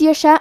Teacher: کلمت یشاء میں مد واجب متصل ہے تو ہم اپنی آواز 4 مد کے برابر لمبی کریں گے